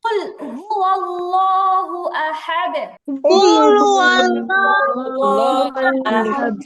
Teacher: আল্লাহ শব্দের লামকে যখন মোটা করে পড়তে হয় তখন জিহিবার আগাটা উপরের দাঁতের আগায় লাগাতে হয় নরমালি লামের মাসালা হচ্ছে জিহিবার আগা উপরের দাঁতের গোড়ায় লাগবে কিন্তু · আল্লাহ শব্দের ডানে জবর আসছে এই জন্য লামটা মোটা হবে